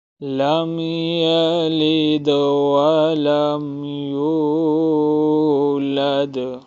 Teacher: لم جو ہے یہاں پر نہ تو غنہ ہوگا اور نہ ہی اخفا، یہاں پڑھیں گے، صرف یہاں پہ ہم لم پہ جو ہے ہونٹوں کو صرف ملائیں گے، جیسے یہاں پہ ہم ملا رہے لم یلد ولم یولد ولم یکن لہ کفوا احد۔